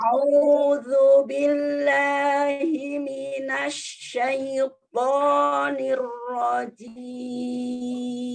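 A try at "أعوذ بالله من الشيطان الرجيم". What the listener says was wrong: lebih diringankan lagi. Coba huruf ainnya, huruf hamzahnya.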